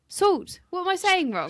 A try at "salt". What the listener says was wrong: You're saying it s u l t. Your sister does the same.